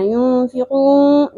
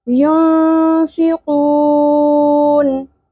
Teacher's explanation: نون ساکن کی آواز آخر میں کلیئر ہونی چاہیے، نون گنہ نہیں بنا کے پڑھنا، ينفقون نہیں پڑھنا، ينفقون.